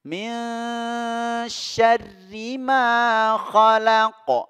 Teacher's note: Min tadi kita sudah bahas, ini ikhfa haqiqi, ya, nun ketemu shin. Cara pengucapannya, ya, kita mempersiapkan untuk mengucapkan huruf shinnya, ya, makhraj shinnya.